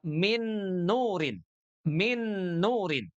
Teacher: Maka huruf nun yang pertama masuk 100% ke huruf nun yang berharakat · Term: idgham kamil